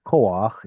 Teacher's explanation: And then later that turns into koach in the Judean dialect. And we'll insert a little furtive patach right there to help us pronounce the chet